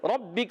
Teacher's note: را پر زبر آنے کی وجہ سے را ہو جائے گا پر، اور با مشدد ذرا رک کر ادا کریں گے